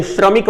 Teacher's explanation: यानी तालव्य श और र का जो सम्मिश्रण है